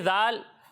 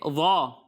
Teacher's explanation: وہ فرق یہ ہے کہ ذال کو ہم باریک پڑھتے ہیں اور ضا کو موٹا پڑھتے ہیں